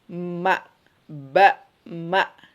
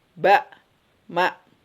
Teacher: kalau ba dan mim itu merapatkan kedua bibir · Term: as-safatain